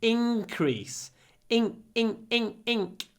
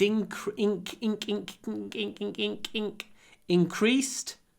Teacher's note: when we pronounce this n we use the sing sink tongue position